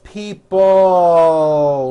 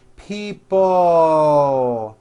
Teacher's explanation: people it's not pronounced people with your tongue not moving it's people with your tongue slowly moving up and your jaw remaining down stretch out that l sound